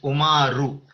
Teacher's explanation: It ends with a full U here